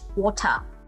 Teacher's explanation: R is dropped in the end.